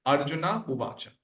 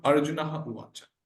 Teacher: So there is a deletion of Visarga there. Because Ukara is there and Akara is there as Puravarnaha and Madhyavarna Visarga gets Lopa.